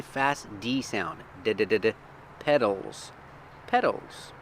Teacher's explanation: we spell it with a t but it's pronounced with the fast D sound